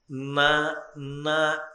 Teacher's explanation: నాలుక చివర భాగము దంతపంక్తి యొక్క వెనక తాకితే తప్ప నకారము పలకదు.